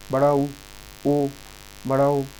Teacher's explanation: बोलते समय मुंह गोल हो जाता है, तो उसे बोलते हैं वृत्ताकार